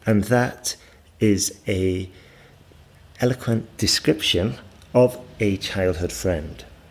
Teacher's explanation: And we go slightly down just to indicate that we've finished.